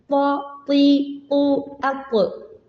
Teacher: നാവിന്റെ മുകൾ ഭാഗം പൊങ്ങിക്കിടക്കും. നാവിന്റെ നടുഭാഗം ചെറുതായിട്ടൊന്ന് കുഴിഞ്ഞിരിക്കും. അവിടെയാണ് കാറ്റ് ട്രാപ്പ് ആവുക. വീണ്ടും അറ്റഭാഗം പൊങ്ങിക്കിടക്കും, ഉയർന്നെടുക്കും.